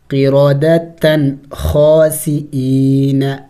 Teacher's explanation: فی السبت فقلنا لهم کونوا دونوں کو کھینچیں گے، واو مد ہے، کونوا قردتن اخفا نہیں کریں گے، تنوین کے بعد حروف حلقی میں سے خا ہے تو یہاں اخفا نہیں کیا جائے گا